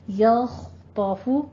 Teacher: یا کو باریک اٹھائیں گے. آگے خا پر کرنا ہے، طا کو پر کرنا ہے